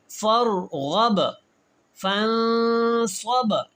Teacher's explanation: जब बा साकिन होता है तो हमने वहां पे कलकला करना होता है। आवाज को दोबारा पैदा करना होता है।